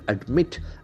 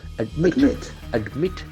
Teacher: And the accent falls on the second syllable.